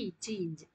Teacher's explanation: இரு மெய்களும் நாவின் இடைப்பகுதி நடு அன்னத்தின் இடைப்பகுதியை பொருந்துவதால் பிறப்பது இச்சு இஞ்சு.